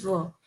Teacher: Labio dental fricative का मतलब lower lip plus अपर teeth.